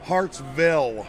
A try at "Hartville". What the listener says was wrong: No S. Hartville.